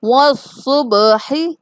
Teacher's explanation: با کو تھوڑا سا ہلا کے پڑھیں گے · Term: قلقلہ